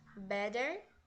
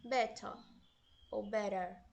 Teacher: quando a gente fala o inglês britânico vocês podem reparar que vai ter um som de T